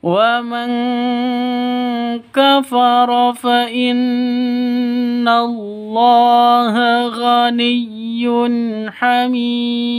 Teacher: nun mati bertemu dengan kaf, samar didengungkan, siap-siap ke huruf kafnya, nun matinya ditambah dengan ng karena ikhfa hakiki, khusus yang ditambah dengan ng, sekali lagi khusus qaf dan kaf.